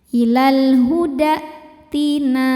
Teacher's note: Kemudian berikutnya ini ada hamzah ya. Hamzah itu dari segi suara sifatnya syiddah. Jadi saat kita tekan suaranya tertahan.